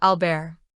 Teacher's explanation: The emphasis moves to the second syllable, and the T at the end is typically silent, a common feature of French pronunciation.